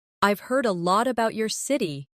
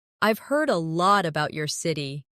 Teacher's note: Try to keep the sentence flowing without pausing between about and your.